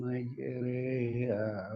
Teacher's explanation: artinya dibaca miring begitu. Dari ro menjadi re. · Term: imalah